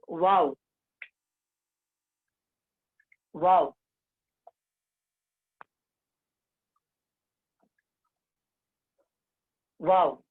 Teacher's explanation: इस वाव का जो मखरज है, दोनों होंठ, दोनों होंठ जबकि पूरे न मिले, ये वाव का मखरज।